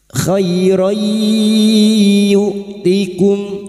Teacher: Fathah tanwin atau fathatain yang bertemu ya idgham bi gunnah masuk pada huruf ya dan mendengung selama 3 harokat.